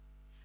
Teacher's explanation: перед цими суфіксами приголосні також можуть пом'якшуватися у вимові